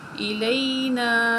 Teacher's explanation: یہ بڑی مد ہے، اس کو 4 الف کے برابر کھینچ کے پڑھیں گے